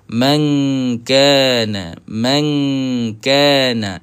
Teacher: Kalau ikhfa hakiki daripada perkataan khafi juga tu, sembunyikan huruf nun ini. Jangan kita letakkan makhraj kita pada makhraj nun. Kita kena pergi kepada makhraj kaf.